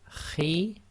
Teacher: slight grinding in the throat there